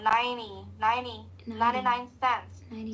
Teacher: So if you notice they don't really say T for the 90.